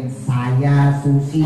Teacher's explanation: S Indonesia itu lebih condong ke sin tebal karena ujung lidahnya di atas. Kita kalau ngucap S, ujung lidah tuh di atas tuh.